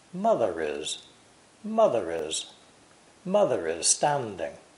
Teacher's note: The words mother and is are linked together, but not contracted.